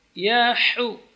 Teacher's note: ha keluar dari tengah-tengah tenggorokan